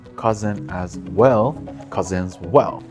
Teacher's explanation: More specifically, when cousin and as are said quickly together, the sounds sort of melt into each other. The sound you hear is actually from the word as, but because of how it connects with cousin, it sounds like cousin as well. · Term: assimilation and sound blending